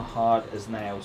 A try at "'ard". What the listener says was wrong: Hard. There's no H. Hard. A-R-D.